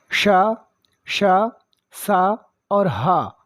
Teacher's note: ऊष्म व्यंजनों के उच्चारण में अंदर से एक गर्माहट, एक स्टीम भाप निकलती है या सुरसुराहट सी प्रतीत होती है, वो ऊष्म व्यंजन कहलाते हैं।